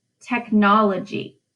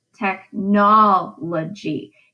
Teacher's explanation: it's the second syllable in that word that gets the stress · the pattern for that word is unstressed, stressed, unstressed, unstressed.